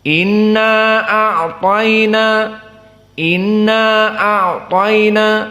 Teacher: Dan qiraah Ibnu Katsir dan Abu Ja'far dalam keadaan ikhtisar, 2 harokat saja.